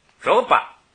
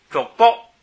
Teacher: 后边巴一读轻声，这就是当动词读